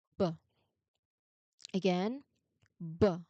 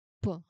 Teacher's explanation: No, your lips do the exact same thing. So the only difference is that for b, you turn your voice on. How do you how do you recognize if you turned your voice on, or if the sound is voiced?